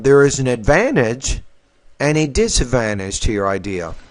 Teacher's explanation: when you present two different ideas, the first idea has rising tone and the second one has falling tone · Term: contrastive stress